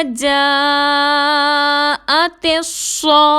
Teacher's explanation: جیم کے ساتھ الف مدہ ہے اور اس کے بعد حمزہ ہے، مد ہوگی، چار حرکت کے برابر کھینچ کر پڑھیں گے. تا کو صاد سے ملائیں گے · فَإِذَا میں حمزہ کو سختی کے ساتھ ادا کریں گے، دال کو نرمی سے ادا کریں گے. الف مدہ ہے، دو حرکت کے برابر کھینچ کر پڑھیں گے. · تا کو صاد سے ملائیں گے، صاد حروف مستعلیہ میں سے ہے، موٹا پڑھیں گے اور سی ٹی کے ساتھ ادا کریں گے.